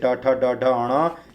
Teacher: ट वर्ग के सारे अक्षर मूर्धा से बोले जाते हैं। जो ऊपर वाले जबड़े के ठीक ऊपर जो खड्डे खड्डे रहते हैं तालु में, आगे वाले भाग में, उसी को मूर्धा कहते हैं। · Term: मूर्धा वाले